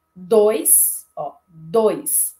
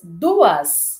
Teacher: Eu tenho um ditongo, mas duas eu tenho um hiato. Então, dois é um ditongo, eu não separo sílaba, mas duas é um hiato, eu faço a separação silábica.